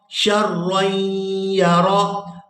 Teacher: تنوین کو جو را کے اوپر ہے اس کو یا مشدد کے ساتھ ملائیں گے تو غنہ کریں گے